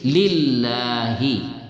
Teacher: kalau diawali dengan huruf yang berbaris di bawah tidaklah dia dibaca tafkhim tidaklah dibaca tebal tapi dibaca tarqik Dibaca tipis